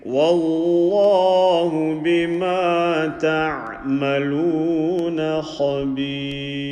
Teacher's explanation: Ra empty mouth. Kha full mouth.